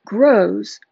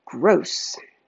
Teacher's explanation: Grows versus Gross These two words are cued the same except for the last sound. Grows' last sound is the voiced /z/, and gross has the last sound that's unvoiced /s/.